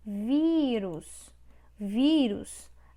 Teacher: A sílaba tônica é vi. Então, é paroxítona. Porque é a penúltima.